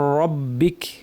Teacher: একটু কাপবে শুরুতে। তারপর কাপ কম্পন আস্তে কমে আসবে। রববিক শুরুতে একটু কাপলো কিন্তু শেষ হওয়ার সময় আর কম্পনটা এতটা বোঝা যাবে না।